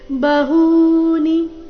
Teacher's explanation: ಇಲ್ಲಿ ಹೂ ದೀರ್ಘ, ನೀ ರಸ್ವ